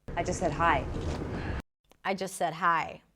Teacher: Again, another example of just that is reduced. The T is dropped and it's connected to the next word.